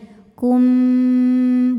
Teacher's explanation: Dan pendapat kedua adalah dengan merapatkan bibir, itbaq syafatain. Kum, bunyinya M tapi bibirnya tidak menekan atau lunak saja nempelnya